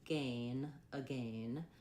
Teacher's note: That sounds like gen, again. British will say again, and they have the A diphthong there. So that is more like gain, again, for the British pronunciation.